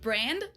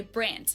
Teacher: Germans usually pronounce a D at the end of a word as a T